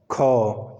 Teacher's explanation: ख के उच्चारण करते समय जो वायु है वो अधिक मात्रा में बाहर निकलती है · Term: महाप्राण